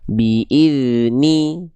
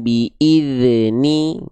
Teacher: Jadi suaranya bukan dipantulkan, tapi suaranya dialirkan. Biidni bukan biidzni gitu.